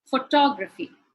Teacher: the stress would go on the second syllable